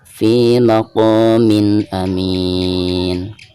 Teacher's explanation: Di bawah mim ada tanwin kasrotain lalu berhadapan dengan huruf izhar halqi yang pertama ya, di sini huruf hamzah. Maka cara membaca tanwin yang ada di bawah mim tersebut itu harus dijelaskan